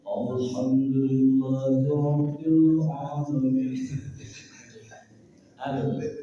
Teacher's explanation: Lalilu tipis. Enggak boleh tawalud. Tawalud itu memantul. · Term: Lam mati, tipis